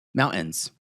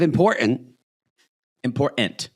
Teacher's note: The interior T is gone.